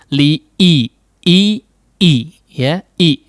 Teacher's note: Tidak betul-betul tertutup si kedua pita suaranya ya. Karena cara mengucapkan huruf hamzah adalah menutup rapat si pita suara ya di pangkal lidah, di pangkal tenggorokan.